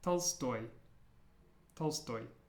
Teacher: And watch your stress, because in Russian, the stress is at the end